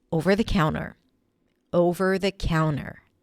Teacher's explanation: when you say the phrase over the counter, you often drop the T